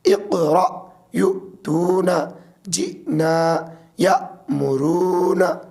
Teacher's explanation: حمزہ ہے اور اس کے اوپر جزم یعنی سکون ہے تو یہ ساکن ہو گیا تو اس لیے جھٹکا دے کے پڑھیں گے